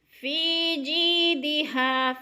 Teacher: فی جیدہا، فی پہ یا مدہ، یا ساکن سے پہلے فا کے نیچے زیر ہے تو یا مدہ کو ایک الف کے برابر کھینچ کر پڑھنا ہے